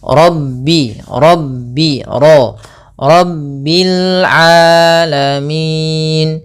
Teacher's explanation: pada lafal ro ini juga tebal yaitu ro tafkhim